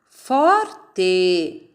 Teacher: A sílaba tônica é o for.